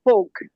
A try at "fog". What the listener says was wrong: Yep. That was correct. Yep. Thank you. Good work.